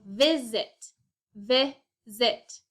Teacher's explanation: So between the I and the S, we hear that short I, not the long I sound.